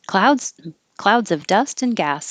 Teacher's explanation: I changed the S in clouds to make it a Z